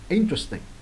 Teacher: Đấy, interesting, nhấn bắt đầu nha. Tuy là nó phân tách ra là interesting, mình phân tích ra này nó thấy có bốn cái âm tiết nhưng mà khi mà đọc nhanh nó trở thành có ba âm tiết là interesting.